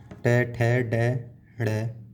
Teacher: मूर्धा। जीभ हमारी ऊपर टकरा रही है तो इसे बोलते हैं हम मूर्धा स्थान, मूर्धन्य या मूर्धा।